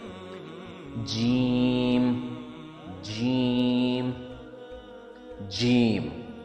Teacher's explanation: جیم، حرف جیم کا مخرج بھی ٹنگ ہے کہ درمیانی حصہ اور اوپر کے تالو کے نیچے کا حصہ ہے۔ جیم کی ساؤنڈ میں ہلکی سی گونج ہونی چاہیے، یعنی کہ قلقلے کا افیکٹ آنا چاہیے